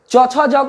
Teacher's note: च छ ज को चवर्ग कहते हैं जिनका उच्चारण तालु से होता है।